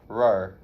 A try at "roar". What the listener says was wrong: Your tongue is not touching any part of your mouth. Not.